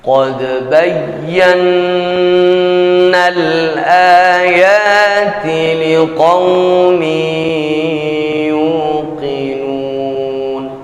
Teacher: kita baca dengan wajib gunah pada huruf nun yang bertasdid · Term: Nun musyaddadah